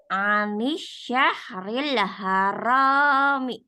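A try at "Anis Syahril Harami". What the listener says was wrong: Ri-nya udah tipisnya alhamdulillah. Ro-nya udah alhamdulillah. Tinggal ininya aja. Sya sama ro-nya dibiasakan untuk tidak maju.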